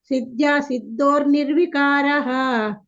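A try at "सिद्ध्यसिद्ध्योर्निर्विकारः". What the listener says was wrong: ಕೇಳಿಸ್ತಾ ಇಲ್ಲ ನಿಮ್ದು ಸಿದ್ಯ ಸಿದ್ಯ ಸಿದ್ಯೋ ಯ ಕೇಳಿಸಬೇಕಲ್ಲ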